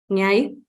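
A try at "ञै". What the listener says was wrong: Nyai. Very good.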